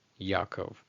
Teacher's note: that AYIN is pretty much just ignored entirely and the PATACH and the CHATAF PATACH, they're just conflated into one syllable